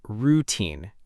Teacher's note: Many learners pronounce it routine, with stress on the first part. But in English, the correct pronunciation puts stress on the second part, routine.